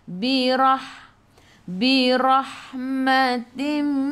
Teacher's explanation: Ra tebal. Sebab apa? Ra baris atas.